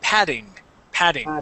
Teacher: here instead of saying pting okay it is Pat patting or we can switch those double T's to a D sound